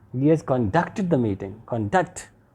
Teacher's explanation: but sometimes this word can also be used as a verb when in a sentence this word is used as a verb the sentence or the stress will be on the second syllable